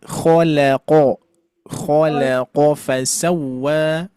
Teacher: lamnya ditipiskan qof-nya tebal lagi